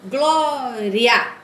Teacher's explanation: eu tenho aqui o I, que é mais fraco, é uma semivogal, e o A, que é mais forte. Então, parece uma escadinha, ó. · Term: Ditongo crescente